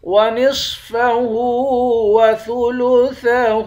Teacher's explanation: صاد کو موٹا پڑھیں گے، ہا کے اوپر الٹا پیش ہے، الٹا پیش کو ایک الف کی مقدار کھینچ کر پڑھتے ہیں۔